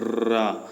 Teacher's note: र को बोलते समय र तो कंपित होता है ना, जीभ कांपता है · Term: प्रकंपित ध्वनि